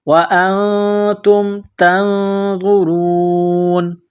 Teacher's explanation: جب اس آیت پر رکیں گے، سٹاپ کریں گے تو نون کو سائلنٹ کریں گے